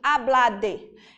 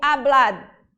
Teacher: é um D mudo, ele não tem vogal. Então, eu não digo hablade, eu digo hablad e eu seguro esse D, tá certo?